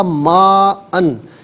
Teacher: یہ ما اس کو جو ہے وہ کھینچ کر پڑھا جائے گا، یہ مد لازم ہے، ٹھیک ہے، جزاک اللہ خیر۔